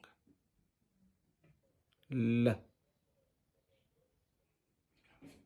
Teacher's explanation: the tip of the tongue is placed against the alveolar ridge, thereby directing the air to escape through the sides of the tongue. L. If this video was helpful, then like, share, and make a comment. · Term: Lateral